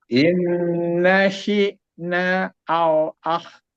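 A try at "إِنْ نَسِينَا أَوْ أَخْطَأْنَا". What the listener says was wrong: Si-nya itu tebal. Dan na-nya itu panjang ya. Sina. Panjang ya. Panjangnya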